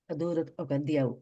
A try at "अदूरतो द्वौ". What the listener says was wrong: No, I think you said Diau, you said it's Dvau. No, not, there's no Ya there. Dvau. Yeah, two, Dvau.